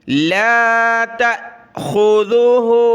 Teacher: تا کے بعد حمزہ ساکنہ ہے, اس کو ہم نے جھٹکا دے کر پڑھنا ہے. لا تا, بہت سارے پڑھتے ہیں لا تاخذہ, الف پڑھتے ہیں, الف نہیں حمزہ ساکنہ ہے.